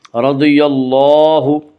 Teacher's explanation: لام کے اوپر کھڑا زبر ہے، کھڑا زبر کو ایک الف کے برابر کھینچ کر پڑھیں گے